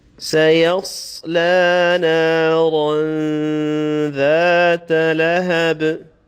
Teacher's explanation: And finally, the last word is lahab. In the end, you'll have the echoing sound or the qalqala on the ba.